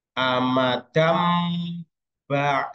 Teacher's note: Nun sukunnya atau tanwinnya itu dibaca seperti Huruf mim jika nun sukun tanwin ketemu huruf ba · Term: iqlab